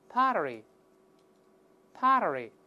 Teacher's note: 读快了之后中间这个字母▁T▁又会轻轻浊化一下